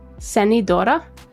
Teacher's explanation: you don't really pronounce zed in Norwegian. So, it would be more like an S.